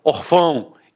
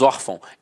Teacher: Então a sílaba tônica está na penúltima e é acentuada.